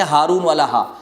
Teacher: ہا جب پڑھیں گے، ہارون والا ہا، تو یہ سینے سے ادا ہوگا